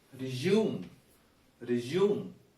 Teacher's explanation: when it is used as an action word or is a verb it is resume resume the second syllable is stressed